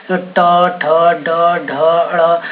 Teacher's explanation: जब भी आप बोल रहे हैं तो आपकी जीभ मुड़ रही है तो इसको मूर्धा बोलते हैं।